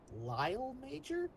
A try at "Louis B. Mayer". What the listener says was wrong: It is Louis B. Mayer, Mayer. Pronunciation there got you, unfortunately. You said major, I think, but yeah, it's Mayer.